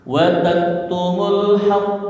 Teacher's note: ketika dibentikan di haqq maka qalqalah akbar. Jadi ditahan 1 detik ya